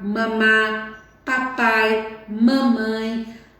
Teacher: eu uso os dois lábios esses fonemas são mais fáceis de ser articulados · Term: fonemas bilabiais